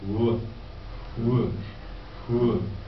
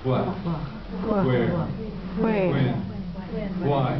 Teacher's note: The H is not lost, it's reversed. The WH becomes HW in pronunciation.